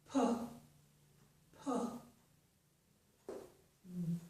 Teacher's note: notice I close my lips and then I open them.